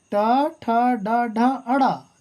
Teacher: ट ठ ड ढ अड़ा ये मूर्धन्य के अंतर्गत आते हैं